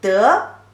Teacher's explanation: Here the third character, also the pronunciation is very similar, has two pronunciations. One is the second tone, de, and another one is the light tone. When it is second tone, it has the proper meaning.